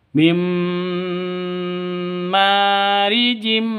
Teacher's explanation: nunnya tapi masuk ke ke mimnya ke huruf idgham bighhunnahnya begitu maka bacanya itu mim langsung mingkem bukan Min tapi langsung mingkem mim langsung masuk ke mim disertai dengung dua ketu dua ketukan